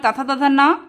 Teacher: ये दंत से बोले जाते हैं